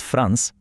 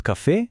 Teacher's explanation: последното е кое има акцент секогаш ама баш секогаш се изговара јасно и гласно